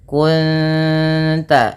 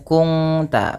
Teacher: Cara membacanya bukan kung ta, tapi menyamarkan bunyi suara nun kepada ta dan ditahan bunyi dengungannya 2 harakat. Kunta bukan kungta, nanti berbeda bunyinya. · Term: ikhfa hakiki